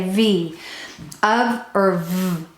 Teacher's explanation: Then put your hand on your throat to say the V sound. We turn on our motor. We vibrate our vocal cords to say V.